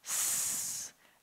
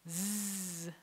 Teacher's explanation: like a s and a z, same exact shape, but one is using your voice box and the other one isn't.